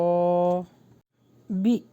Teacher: حمزہ کے اوپر جزم ہے تو اس کا جھٹکا دیں گے